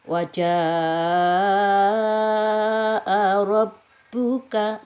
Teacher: Waja'a ini janya ada tanda kayak bendera, terus ini ada hamzah. Berarti ini mad wajib muttasil. Ini dibaca 5 sampai 6 harokat ya. Harus dibaca panjang.